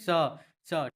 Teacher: इसका उच्चारण स्थान तालव्य होता है तालू